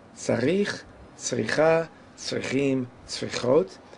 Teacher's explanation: we want to have the accent on the last syllable